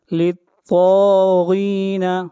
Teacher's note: اگلی آیت، آیت نمبر 22. للطاغین، طا اور غین دونوں حروف مستعلیہ میں سے ہیں، دونوں کو موٹا پڑھا جائے گا